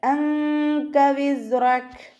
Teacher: അപ്പോൾ നൂൻ സാക്കിനയെ മറച്ചു വെച്ചിട്ട് മണിച്ചോതി കൊടുക്കുക. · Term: ഇഖ്ഫാൻ്റെ